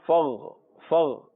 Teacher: آواز موٹی ہو رہی ہے کیونکہ غین حروف مستعلیہ میں سے ہے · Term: موٹا